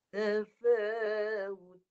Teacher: Hujung lidah menyentuh ke pangkal gigi atas. Huruf ta nipis. Ta. Jadi mulut nipis.